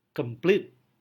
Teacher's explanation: Berarti silabel kedua mengalami penekanan lebih kuat. Seolah-olah silabel pertama tidak mendapatkan penekanan.